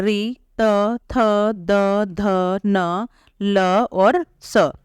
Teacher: तो इनका उच्चारण करते समय जीभ दांतों को स्पर्श करती है, तो ये कहलाएंगे दंत्यः वर्ण।